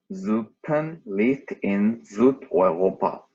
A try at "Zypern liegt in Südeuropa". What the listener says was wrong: But for my feeling, the only part which you should practice is the Z sound. Zypern. Zypern. Okay, practice just the Z.